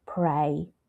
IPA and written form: preɪ (pray)